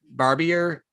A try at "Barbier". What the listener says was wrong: So Bobby, it would be Bobbier. They wouldn't pronounce the R.